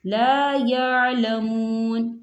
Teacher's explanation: واو ساکن ہے، واو ساکن سے پہلے پیش ہے تو یہاں پر واو مدہ ہوگا، اسے دو حرکت کے برابر کھینچ کے پڑھیں گے